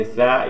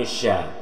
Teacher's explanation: ini sa, ini ujung lidah dengan ujung gigi. Kalau ini sya, yaitu tengah lidah dengan langit-langit